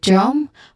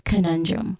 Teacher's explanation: And then we end with drum, which also has a schwa sound. It begins with a consonant blend of the two consonants D and R.